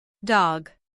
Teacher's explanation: Short O. Sounds like ah in American English